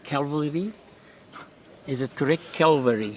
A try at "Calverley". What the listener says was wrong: Calverley, yeah. Usually either the L gets dropped and I get put on top of a mountain. Calvary or something.